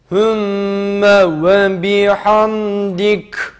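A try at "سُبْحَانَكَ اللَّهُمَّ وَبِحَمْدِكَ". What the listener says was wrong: Hayır, biraz daha incelt. Ha gibi oluyor. Hem, ha, hem, dik.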